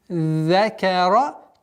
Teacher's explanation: После огласовки фатха над каф уходим на удвоенный за.